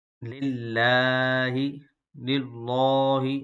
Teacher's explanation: جو لفظ اللہ کا لام ہے اس کو باریک پڑھیں گے